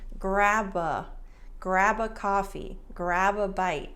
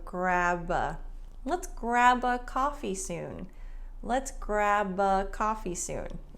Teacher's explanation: the b and grab links to the a sound